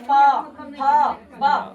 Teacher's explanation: प से लेकर म तक जब पढ़ते हैं प थ ब तो दोनों होठ आपका जो है आपस में टकराती है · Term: ओष्ठ